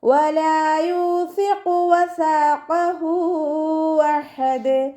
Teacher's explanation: വാവ് ഉച്ചരിക്കുമ്പോൾ ചുണ്ടുകളൊന്ന് സർക്കിൾ ചെയ്ത് കൊടുക്കുക. ലാമിൻ്റെ കൂടെ അലിഫ് മദ് വന്നു 2 കൗണ്ട് നീട്ടിക്കൊടുക്കുക. യൂസിഖു. യാൻ്റെ കൂടെ വാവ് മദ് വന്നു 2 കൗണ്ട് നീട്ടിക്കൊടുക്കുക.